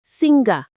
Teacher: Look at the word singer. There is no hard G sound in it.